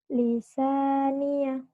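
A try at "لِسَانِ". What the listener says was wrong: Kok lisania nggak ada ianya jangan dibaca. Lisani. Lisani. Kebalik.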